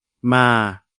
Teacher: Il n'y a pas de signe de tonalité, la syllabe se termine par une voyelle longue, donc elle est vivante et la consonne initiale est basse, le ton est donc plat